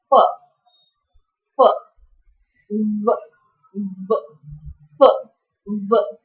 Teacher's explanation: with the help of your upper teeth and lower lip, you could produce this sound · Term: labiodental sounds